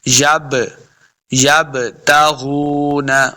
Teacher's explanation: غین کو موٹا پڑھیں گے، غین حروف مستعلیہ سے ہے، غین پیش واو غو، واو مدہ ہے، اس کو 2 حرکات لمع کریں گے.